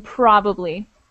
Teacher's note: definite emphasis on the first syllable in probably